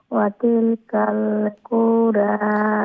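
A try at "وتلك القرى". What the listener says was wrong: কুরা উ লম্বা হবে না, রা লম্বা হবে। হ্যাঁ, ওয়াতিলকাল কুরা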